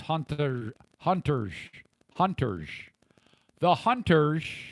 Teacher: she puts an SH sound at the end of where there's an S